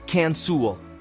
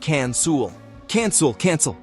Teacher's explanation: Notice how the second syllable, sell, is very soft and unstressed. It's not cancel, but cancel.